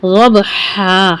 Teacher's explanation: ٹھیک ہے, ضبحا, ہا کی آواز کو واضح کریں. 2 کاؤنٹ کر کے لمبا کریں گے اس کو, بس ضبحا. ٹھیک ہے, ضبحن نہیں بولنا ہے, ضبح کر کے روکنا نہیں.